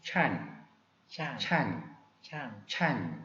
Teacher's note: 한글에 치읓 그러면 혀가 약간 위쪽에 들려져 있는데 캄보디아 분들은 혀가 아래쪽에 내려가는 경향이 있습니다. 그러다 보니까 이 발음이 살짝 섞여가지고 이렇게 야 모음을 썼는데 그 이유가 바로 혀가 아래쪽으로 떨어지다 보니까 이 발음이 살짝 들어갑니다.